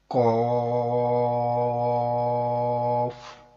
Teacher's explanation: مستعلی حرف، قوف، موٹا پڑھیں گے